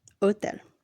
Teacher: the letter H is always silent in Spanish.